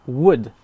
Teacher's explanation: on ne prononce pas le L, would, tout simplement.